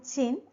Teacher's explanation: During the production of ch and j, the first stop is occurring between the blade of the tongue and the hinder part of the alveolar ridge